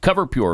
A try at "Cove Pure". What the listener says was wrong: Not Cover. The R is silent.